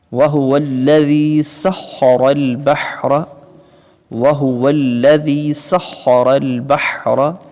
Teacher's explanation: سین کی آواز سیٹی کی طرح اور خا کو پر کر کے پڑھیں گے، یعنی موٹی آواز میں. را کو بھی پر کر کے پڑھیں گے موٹی آواز میں.